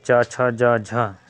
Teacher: अन्य शब्दों में कह सकते हैं इन व्यंजनों को उच्चारण वगांगों का स्पर्श भी होता है तथा प्रश्वास वायु को संघर्ष करना पड़ता है। · स्पर्श संघर्ष व्यंजन वो कहा जाता है जिसको निकलने में थोड़ा सा मुख में संघर्ष करना पड़ता है।